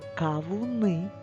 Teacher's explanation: наголос падає на букву И але звук а ми промовляємо чітко і добре його чуємо